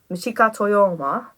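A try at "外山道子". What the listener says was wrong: Michiko Toyama. Well, actually, if Japanese Exactly, the classic way to pronounce most names from that part of the world is you put the family name first and then the individual's name afterwards. So it's Toyama Michiko.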